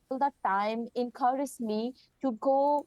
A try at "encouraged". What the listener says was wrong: Encourage, again, that problem with the ju.